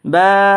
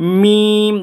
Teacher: বা উচ্চারণ হয়েছে আপনার দুই ঠুটির বিজা অংশ থেকে কিন্তু মিম উচ্চারণ হবে দুই টুটির শুকনো অংশ থেকে